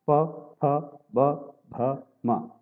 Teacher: इनमें पवर्ग जो है प, फ, ब, भ, म, ये होठों का स्पर्श करते हैं। प, फ, ब, भ, म।